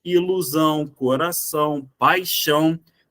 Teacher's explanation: dois acentos não na verdade o Ti só marca ali que aquele a que está na palavra deve ser pronunciado de maneira nasalizada parte do ar tem que sair pelo nariz · Parte do ar tem que sair pelo nariz. É somente isso. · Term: dígrafo nasal ão